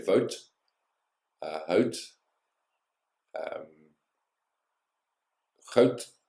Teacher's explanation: The D and the T sound at the end of a word sounds the same.